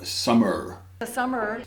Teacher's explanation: A very strong, I think it's a retroflex, but it might be bunched